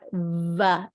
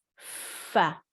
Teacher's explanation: for va sound, you're using your vocal cords. That's why it's coming loud and clear. But when you say fa, it's coming with air, just air.